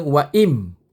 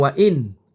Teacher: Waim alif nun mati ba wa inin. Tetapi dia tak bunyi in. Dia bunyi im. Pasal nun mati bertemu dengan mim.